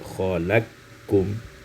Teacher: diidghamkan qaf pada kaf menjadi khalaqkum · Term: idghamul qaf fil kaf